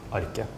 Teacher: another place in Norway, you would just drop the T, like my accent, and then it would just be arke